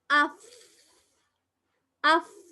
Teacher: மேல இருக்கிற பல்ல பனி உதட்டோட போயிட்டு சேர்த்து பாத்தீங்களா?